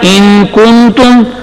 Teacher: کنتم میں نون کے بعد تا آ گیا، تو وہاں پھر غنہ ہوگا